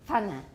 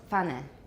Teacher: Some languages have affricates in which the bilabial stop is released into a labiodental fricative.